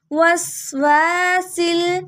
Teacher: واو کے ساتھ الف آ رہا ہے، تھوڑا لمبا کریں گے. وسواسل، سین کو لام سے ملانا ہے.